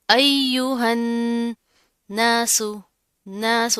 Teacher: नून के ऊपर तशदीद आ रही है, गुन्ना करेंगे